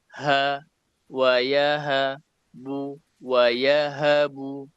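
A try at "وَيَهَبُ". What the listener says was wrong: Nah, huruf H-nya tipiskan lagi, jangan wa yahabu ha, ha disamakannya. Wa yahabu. untuk membedakannya dari suaranya gitu ya.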